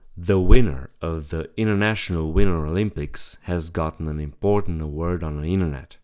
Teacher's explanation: The T is completely cut out when there is an NT plus a vowel. This is common but also optional.